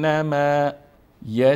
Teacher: مشدد هست پس باید به مقدار دو حرف تلفظ شوه